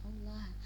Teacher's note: Allah itu lafzul jalalah tafhim ya, karena dia dibaca tebal